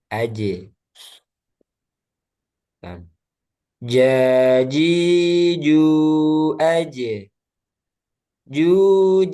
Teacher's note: Jim dia tengah lidah bertemu langit-langit. Nah, kemudian udaranya dia tertahan. Jangan sampai ada udara yang benar ja.